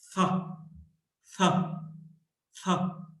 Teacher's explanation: The tongue comes out in between the teeth.